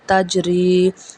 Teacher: تا زبر جیم تج، را زیر یا ری، را زے یا ری، تجری۔ یہاں پہ را کو باریک پڑھا جائے گا کیونکہ را کے نیچے زیر ہے۔